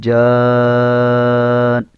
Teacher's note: یہ الف جو ہے مدہ ہے، الف سے پہلے زبر آ رہی ہے تو الف مدہ ہے. اس الف کو 4 الف لمبا کر کے پڑھیں گے